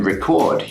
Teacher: in the verb form you stress the second part of the verb